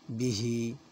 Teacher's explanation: ہا کے نیچے کھڑی زیر ہے، اسے بھی کھینچیں گے